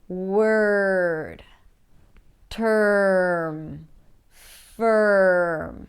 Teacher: So the final challenge is mispronouncing the as in stir. Now, the as in stir is a special vowel sound. Because it's always associated with the R sound, especially in American English, where the R is actually pronounced.